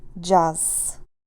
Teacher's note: Z at the end of the word which is voiced sounds like s